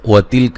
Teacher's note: الواو کو ادا کرتے ہونٹوں کو گول کرنا ہے